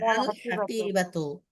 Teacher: লামের উচ্চারণ হবে আলাদা এবং স্পষ্ট হবে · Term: কমারিয়া